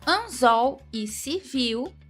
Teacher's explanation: anzol e civil tônica na última sílaba, ou seja, oxítonas.